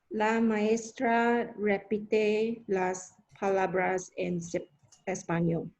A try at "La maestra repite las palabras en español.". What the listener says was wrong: Y pronunciaste bien. You pronounced that well.